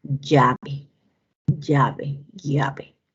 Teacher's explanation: este sonido también es un sonido lateral, lateral palatal